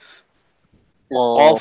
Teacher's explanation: এই যে আমরা জিহ্বাটা দেখতে পাচ্ছি, এই জিহ্বার যে শেষের অংশ, যেটা আসলে গলার সাথে লেগে আছে, ওইটাকে বলে শেষাংশ। জিহ্বার শেষাংশটা উপরের মাংসল অংশে লাগবে। আমাদের উপরে তালু আছে না, এদিকে তালু আছে, তো তালুর এইখানে একটা মাংসল অংশ আছে, এইখানে টাচ করবে জিহ্বার এই শেষাংশটা, তখন কফ উচ্চারিত হবে।